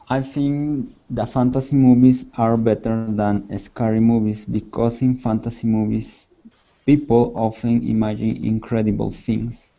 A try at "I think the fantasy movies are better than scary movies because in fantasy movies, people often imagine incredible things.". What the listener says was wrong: Nice. Really good job. Good pronunciation as well.